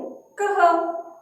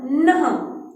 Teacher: हल्का सा ह का उच्चारण हो रहा है। मतलब आधे ह की तरह। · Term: विसर्ग